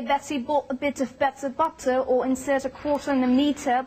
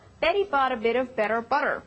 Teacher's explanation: the Americans flap the t sound, it sounds like an almost d sound, and not keep it crisp and clear like the British